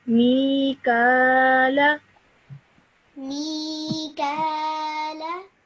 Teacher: you stretch the me sound out for 2 seconds